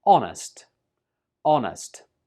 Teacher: Don't pronounce the H when you say this word. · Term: silent letter